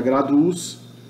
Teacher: No genitivo U fica longo, grados vira graduus.